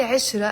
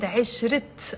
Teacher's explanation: I didn't say عشرة, I said عشرت. I'm pronouncing the T مربوطة. Why? Because there is a noun after it.